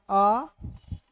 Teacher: पश्च स्वर अर्थात जिसके उच्चारण में जीभ का अंतिम भाग प्रयुक्त होता है